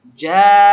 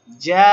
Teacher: জান্না, নাটা তাড়াতাড়ি, কারণ নুন জবরে কোনো টান টান নাই, নুনে তাসদীদ হওয়ার কারণে ওয়াজিব গুণনা এক আলিফ ধরব, না তাড়াতাড়ি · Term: লাজিম মাদ